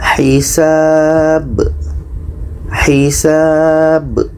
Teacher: Bi ini kan pendek. Jadi di sini ada ba mati, letaknya pada akhir ayat, maka ini qalqalah kubra.